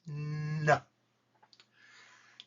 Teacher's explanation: N is made behind your teeth.